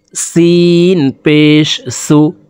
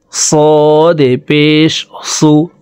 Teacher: প্রথম হরফটি পাতলাভাবে উচ্চারণ করে পড়তে হবে, দ্বিতীয় হরফটি মোটা করে উচ্চারণ করে পড়তে হবে